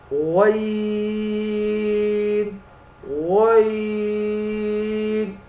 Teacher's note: غین پڑھتے ہیں نا شروع میں ہی موٹا ہوتا ہے، بعد میں باریک ہوتا ہے